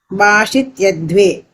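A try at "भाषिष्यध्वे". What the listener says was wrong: Vashishyadve. Sha is coming twice. The first sha is of the dhatu itself. The second sha is of the rit lakara. So bhashishyadve.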